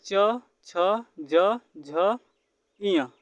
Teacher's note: जीभ का अग्रभाग तालु से स्पर्श करता है